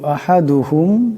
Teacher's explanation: এখানে মিম সাকিন কিন্তু মিম সাকিনের গুন্না করা যাবে না